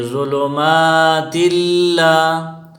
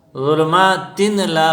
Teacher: فی ظلمات اللہ، ظلمات اللہ، یہاں تنوین کے بعد حروف یرملون میں سے لام آیا ہے تو یہاں قاعدہ یہ ہے کہ حروف یرملون میں سے لام اور را کے بعد، تنوین کے بعد لام اور را آ جائے تو وہاں غنہ نہیں ہوگا، صرف ادغام ہوگا